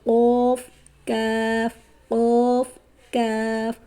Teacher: जुबान की जड़ जब कवे के करीब से नरम तालू से लगे तो उससे कौफ अदा होता है